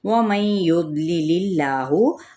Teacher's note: व मई युद्लिल्लाहु, अब यहाँ पे इदगाम माल गुन्ना का कायदा दौदपुर है और इसमें जलाला का लाम बारीक क्योंकि पीछे ज़ेर है